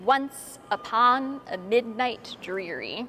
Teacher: In terms of structure, the poem has 18 stanzas, and every line has the same pattern of stressed syllables followed by unstressed syllables